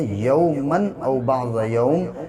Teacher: قال لبثت یوما او بعض یوم، میم کے اوپر دو زبر کی تنوین ہے اور تنوین اور نون ساکن کی آواز ایک جیسی ہوتی ہے، یومن او بعض یوم، لیکن یہاں پہ غنہ اس لیے نہیں ہوگا، ناک میں آواز اس لیے نہیں ٹھہرائیں گے کیونکہ آگے حمزہ ہے اور یہ الف سے مطلب نہیں ہے، یہ الف ہو یا نہ ہو، یہ میم کی جو تنوین ہے وہ ایسے ہی پڑھا جائے گا۔